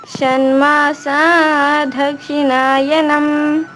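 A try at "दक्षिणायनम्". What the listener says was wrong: మా దాగు కింద ఒత్తులేదమ్మా, ధా కాదు, దక్షిణాయనం. అక్కడ దక్షిణాయనంలో కింద ఒత్తులేదు. తన్మాసా దక్షిణాయనం.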